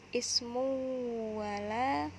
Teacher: dibaca berdengung karena tanwin bertemu mim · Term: idgham bigunah